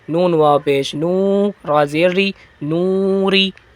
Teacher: واو مدہ کو بڑھائیں گے نا ایک الف کے برابر